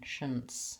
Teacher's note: just says shunts, which is an SH sound, a vowel schwa, sounds like an N sound, and an S sound